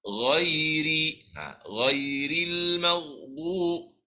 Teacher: Bila sebut ra nipis, dia tak naik pangkal lidah kita. Jadi dalam surah Al-Fatihah tu ada ra yang dibaca dengan nipis, iaitu ghairil maghdub, gitu.